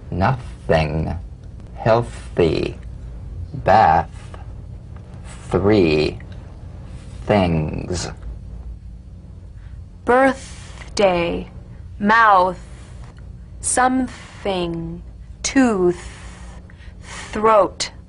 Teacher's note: The voiceless th cognate voiced th the unvoiced tongue point to teeth fricative consonant. Play this dry, gentle, whispered, lightly, and softly without the slightest pressure.